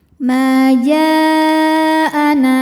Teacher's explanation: Maka jim dipanjangkan boleh empat boleh lima harakat. Ma jaana na mad thobi zohiri.